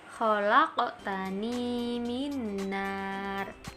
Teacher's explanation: Ini ada huruf qaf ya. Huruf qafnya itu dibaca mendekati o. · Pada pengucapan huruf qaf dan to, pantulannya mendekati huruf o. Jadi ketika dibaca memantul, itu nanti akhirannya mendekati huruf o. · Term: qalqalah sughro, qalqalah